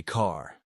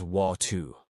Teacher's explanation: in classic New York speech, the R disappears unless it's at the beginning of a word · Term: the dropped R